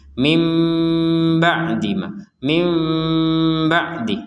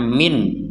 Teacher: maka kita membacanya dengan Nun sukunnya dibaca dengan mim mim ba'dima mim ba' seperti itu Jadi jangan sampai dibaca Min